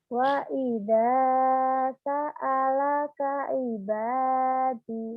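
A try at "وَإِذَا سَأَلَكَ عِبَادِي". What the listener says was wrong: Ainnya tuh kurang. Ibadi. Ain. Ain.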